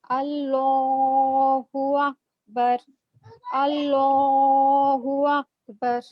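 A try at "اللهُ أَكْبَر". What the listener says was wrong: अकबर ये काफ है. काफ मोटा नहीं पढ़ेंगे इसको. अल्लाह ये वाला मोटा पढ़ेंगे लाम, लेकिन अकबर ये काफ बारीक है. अल्लाहु अकबर.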